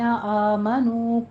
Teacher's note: آمنو میں الف مدہ واو مدہ ہے، 2 کاؤنٹ کرنے ہیں